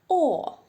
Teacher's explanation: звук о ротик при вимові звука о широко відкритий а губи А губи округлюються вперед витягуються ось так о а язичок а язичок у нас знаходиться внизу